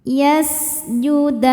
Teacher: Sinnya berdesis ya seperti ular karena punya sifat namanya sofir. Yasjudan. Saat berhenti hukumnya adalah mad arid li sukun.